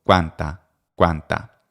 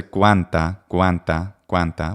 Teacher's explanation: So we have the K, but the W is made simultaneously. The way I do this is to round my lips before I begin making the K. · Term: labiovelar